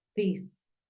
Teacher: que la th es como como una d como una Z no es tan fuerte como una t porque es un sonido dental